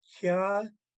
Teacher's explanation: Kya has a glottal stop in it